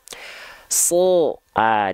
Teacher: dia ketika fathah vokalnya tidak a, tapi vokalnya adalah o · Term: huruf yang tebal